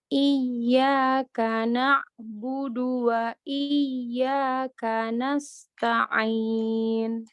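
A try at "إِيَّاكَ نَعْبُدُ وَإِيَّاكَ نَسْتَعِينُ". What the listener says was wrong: Kemudian kayak Mbak Fania ya, untuk ainnya seperti itu. Ketika dia sukun, dia masih mempunyai sifat rafa'ah, masih mempunyai sifat mengalir, ya. gitu, tapi pelan.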